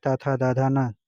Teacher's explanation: त थ द ध न दंत होता है।